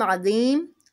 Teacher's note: عظیم دی، دیکھیں یا ساکن کے بعد وقف کر رہے ہیں میم پر، اس لیے یہاں پر اس کو کھینچ کر پڑھیں گے